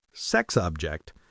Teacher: In the first meaning, sex object, there's no pause. It's one smooth idea.